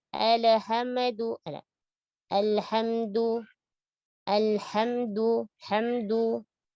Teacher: Jelaskan dan tipiskan huruf lam sukun dan jangan dibaca dengan memantul